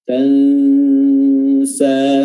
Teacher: Nunnya disamarkan dengan meletakkan makhraj atau lidah pada posisi huruf setelahnya, yaitu huruf sin. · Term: ikhfa hakiki